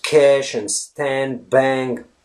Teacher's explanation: Americans pronounce them as e there's no a right it's a distinct e sound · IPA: æ